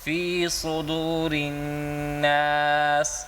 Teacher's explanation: جی صاد کو موٹا کر کے پڑھیں، پر کر کے پڑھیں